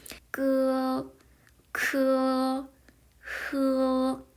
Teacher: 혀뿌리 즉 목구멍 가까이 쪽에서 소리가 나는 아이들이에요